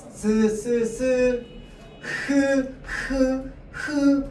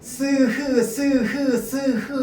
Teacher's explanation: 공기가 나오는 통로를 막는데 히읗은 어디를 막냐면 어디를 좁히냐면 목구멍을 좁히는 겁니다. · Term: 마찰음